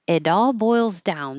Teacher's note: this T changes to a d because it's between two vowels